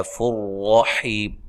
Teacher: نون تنوین کا ادغام بلا غنہ ہے، غنہ نہیں کرنا، حی یا مدہ ہے، وقف کی صورت میں مد کر سکتے ہیں۔